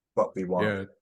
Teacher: I guess that t isn't particularly articulated is it what we want maybe it's like not released like